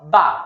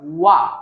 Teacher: বা জবর হলো বা, ঠোঁটটা লাগে, আর ওয়াও জবর ওয়া, এটা ঠোঁটটা লাগে না, একটু সার্কেল হয়ে যায়।